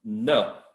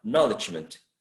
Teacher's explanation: In general, the root is no. It contains a diphthong. But when you add suffixes, the diphthong becomes a monophthong.